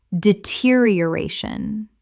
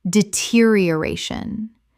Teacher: Six syllables with the stress on the fourth.